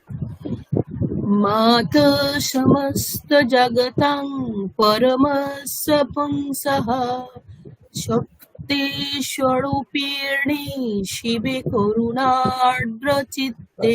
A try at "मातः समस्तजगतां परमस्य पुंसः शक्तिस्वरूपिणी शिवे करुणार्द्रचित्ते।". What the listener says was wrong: এখানে গন্ডগোলটা কেন হয়েছে, আপনি স্বরূপ রটা দীর্ঘ উকার আছে, ওই দীর্ঘ উকারটা করলেই অটোমেটিক্যালি সব ঠিকঠাক থাকতো। দেখুন শক্তি স্বরূপ দীর্ঘ করলেই হবে, শক্তি স্বরূপিণী শিবে করুণার্দ্রচিত্তে।